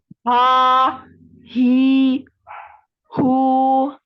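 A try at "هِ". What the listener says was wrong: Nah, itu terlalu ke bawah. Nah, jangan terlalu ke bawah ya. Ya, itu terlalu ke bawah, itu sampai di dada. Ya, kalau anti pegang dada, nah itu ada terasa ya getaran di dada. Jadi tidak sampai ke bawah. Nah, di tenggorokan saja ya. Tenggorokan bagian atas ya, atau kalau anti mau pegang di leher, itu leher bagian tengah ya, di jakun. Nah, situ ya. Jadi tidak terlalu kuat ya.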